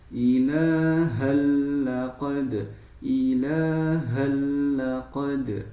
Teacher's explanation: idgam bila ghunah langsung masuk tanpa gunah. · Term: idgham bila gunnah